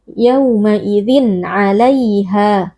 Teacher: Yauma idzin izhar halqi karena ada tanwin bertemu dengan salah satu huruf yang keluar dari halq atau dari tenggorokan yaitu huruf ain. Cara membacanya tanwin kita baca dengan izhar atau dengan jelas tanpa didengungkan.